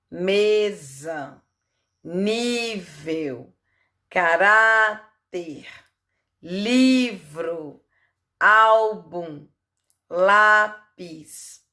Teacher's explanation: a penúltima sílaba é mais forte aqui então são paroxítonas